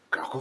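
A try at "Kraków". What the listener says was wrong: Yeah, you have to roll the R.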